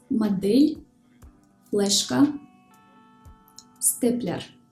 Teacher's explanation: So we said that if a consonant is followed by a soft vowel, it is pronounced soft, but there are exceptions, like for example in the words модель, флешка, степлер. In these words, the consonants D, L, T are pronounced hard, even though they are followed by a soft vowel.